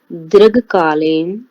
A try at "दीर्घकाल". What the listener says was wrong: कालीन क्यों जा रहे हैं आप? दीर्घ काल तक रहिए।